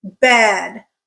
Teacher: that vowel has an arc to it it goes up in pitch and then it comes back down